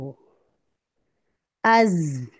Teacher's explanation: ऊपर वाले नीचे वाले दोनों दांत मिलेंगे पीछे से जुबान की नोक मिलेगी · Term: सफीर की साउंड